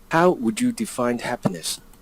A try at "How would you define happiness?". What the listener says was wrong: Did he say defined? Oh, he did, didn't he? There's no D there. How do you define happiness? Not defined.